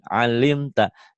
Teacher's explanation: adanya di tenggorokan. Jangan ke hidung, jangan ngalimta, iya. ngalimta, jangan alimta. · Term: ain